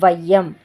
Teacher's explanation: இதுதான் ஐகார குறுக்கம் அப்படின்னு சொல்கிறோம். ஐகாரம் சொல்லோட முதல்ல வரும்போது 1.5 மாத்திரை அளவில் ஒலிக்கும். · இப்படி ஒரு சொல்லோட முதல்லையும் இடையிலையும் இறுதியிலையும் ஐகார குறுக்கம் வரும்போது தனக்குரிய மாத்திரையிலிருந்து கொஞ்சம் குறைந்து ஒலிக்கும்.